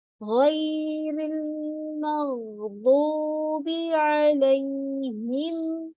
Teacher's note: غیر کو موٹا پڑیں گے، منہ تھوڑا سا کھلا رہے گا